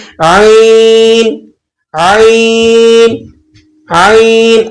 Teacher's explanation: تو عین کی ادائیگی میں زبان کی جڑ کو حلق کی طرف مضبوطی سے دباتے ہوئے باریک اور رگڑ کھاتی آواز میں آپ نے اس کو پڑھنا ہے